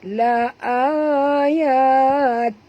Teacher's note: La ayatil, til bunyi dia tuan-puan. Eja memang betul tin bunyi dia, tapi bila kita masuk saja tajwid dia bunyi til ya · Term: idgham bila ghunnah